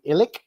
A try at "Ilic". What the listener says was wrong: Ilic. It's with a ch, but it's fine.